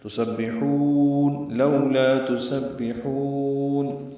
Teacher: ہے، لو معروف طریقے سے پڑھیں گے، لا الف مدہ، تسبحون سین صفیر کی آواز سے باریک با سے ملائیں گے